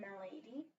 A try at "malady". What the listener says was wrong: Not malady. Short A. Malady. Malady.